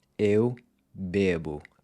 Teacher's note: Using the verb beber, to drink, as an example, the E in beber is pronounced with a closed E, and it stays closed in the I form